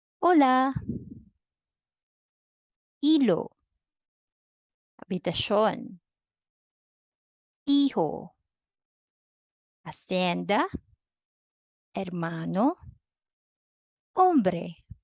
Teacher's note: The Spanish H is always silent